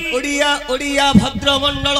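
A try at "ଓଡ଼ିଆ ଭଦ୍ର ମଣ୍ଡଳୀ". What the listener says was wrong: अरे मंडल नहीं मंडली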